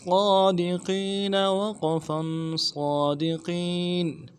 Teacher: قاف کو یا کے ساتھ ملانا ہے، یا مدہ ہے، ایک الف دال میں کھینچیں گے، نون کو نرم سے پڑھیں گے. وقف کی صورت میں نون کو ساکن کریں گے